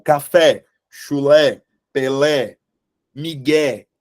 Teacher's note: Elas têm como sílaba tônica a última sílaba portanto elas são oxítonas tá Quando vocês tiverem essa dúvida na